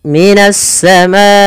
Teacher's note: kita memanjangkan untuk hukum tajwid mad wajib muttasil sepanjang empat harakat atau lima harakat · terletak setelah huruf mad maka di sini kata assamai ada Ma Awalnya dia Ma dua harakat karena datangnya huruf hamzah setelahnya maka dia menjadi empat harakat